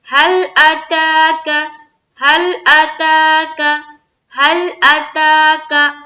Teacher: حمزہ کو بھی نہیں کھینچنا ہے، کاف کو بھی نہیں کھینچنا ہے